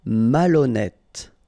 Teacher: remember H doesn't exist, so malhonnête. Don't insist on the final E.